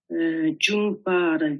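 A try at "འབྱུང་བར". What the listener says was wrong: Attention, Jungwar, c'est pas Jungpar. Jungwar, Gyurwane.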